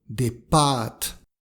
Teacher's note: Des pâtes, avec un A long